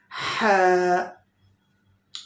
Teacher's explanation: ha pronounced by middle throat